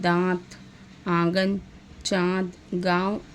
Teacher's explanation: अनुनासिक स्वरों में उच्चारण जो है नाक और मुंह दोनों से होता है, जैसे दांत, आंगन, चाँद, गाँव आदि।